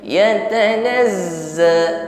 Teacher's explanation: zai tasydid, zai sukun, shafirnya lebih kuat